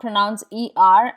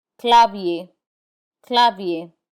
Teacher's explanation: we do not pronounce the r in i e r instead it has the a sound